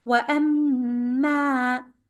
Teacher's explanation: Ma is a shadda letter. You have to make it stronger 2 counts. And it is followed by alif to make it longer also.